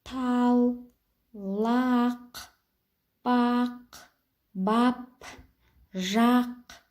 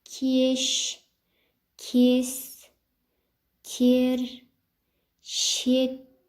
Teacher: ортасында тұрған а дыбысы жуан, ал ортасында тұрған е дыбысы жіңішке